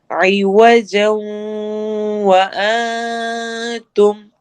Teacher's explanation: عوجا جوں پہ ہم ادغام غنہ کریں گے